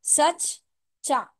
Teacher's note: तजदीद की वजह से सख्ती से पढ़ेंगे डबल चा की आवाज आएगी · इसी तरह से सच्चा, देखिए यहाँ पे लिखा हुआ है, सीन चा चा अलिफ, है ना, सच्चा, उसके ऊपर तशदीद है ना, तो यहाँ पे क्या आएगा, डबल चा की आवाज आएगी